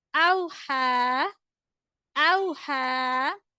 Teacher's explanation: ha standing fatha ha is stretchable equal to one alif